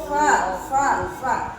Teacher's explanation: Nah, jadi bibir bawah kita nempel di gigi atas. Empat gigi atas nempel ya. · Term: huruf fa